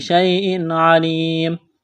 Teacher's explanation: تنوین کے بعد عین ہے، حروف حلقی ہے تو یہاں پر غنہ نہیں کریں گے، آواز ناک میں نہیں چھپائیں گے